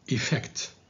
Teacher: And this word, don't say effect, because it's effect. The stress is on the second syllable, on the F.